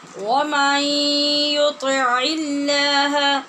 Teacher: لفظ اللہ کے لام کو باریک کیوں پڑھا ہے؟ اس سے ماقبل عین کے نیچے زیر ہے، لہٰذا اس کو ہم نے پر نہیں کرنا.